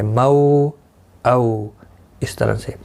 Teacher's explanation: مو اولین ہے، تھوڑا نرمی کے ساتھ کھینچ کر ادا کریں گے. او اولین ہے، دونوں کو ایک ایک الف کی آدھے الف کی مقدار کے برابر کھینچ کر پڑھیں گے.